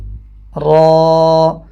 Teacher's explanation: را کی آواز یہاں پہ موٹی ہوگی، را، اور را کو پڑھتے ہوئے را اس طرح زیادہ تکرار نہیں کریں گے.